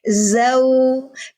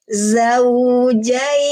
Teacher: Karena ada rohwah, mengalir suara. Suara yang dialirkan di huruf waw suara u.